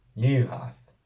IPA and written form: 'liu.haθ (LIUHAÞ)